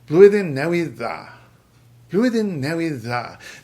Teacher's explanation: by itself it would be da, but in this context it gets this softening to dda